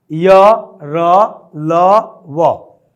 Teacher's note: इनमें जीवा को सटने की, किसी जगह पर स्पर्श करने की आवश्यकता नहीं पड़ती, अतः यह अंतस्थ व्यंजन है।